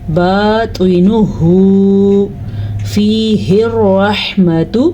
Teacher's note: را کو پھر سے پر پڑھا کیونکہ را کے اوپر زبر ہے